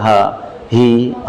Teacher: H itu letaknya di sini, tenggorokan paling bawah, aqsal halqi, bukan di sodr, dada. Pasti lewat sodr, tapi makhrajnya, tempat dia keluar di sini, tenggorokan paling bawah, maka nggak usah berlebihan. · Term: huruf H